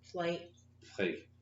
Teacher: So plate, it has a T and not a K. A T. So it's up closer to the front of your mouth.